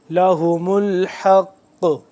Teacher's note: حق قاف کو موٹا پڑھیں گے اور اس کے ساتھ ساتھ اس کو ہم قلقلہ بھی کریں گے